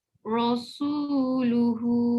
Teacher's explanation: Su tu nipiskan. Ra memang tebal tapi su macam su ya. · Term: Ra tafkim